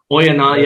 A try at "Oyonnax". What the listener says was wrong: You don't pronounce the X.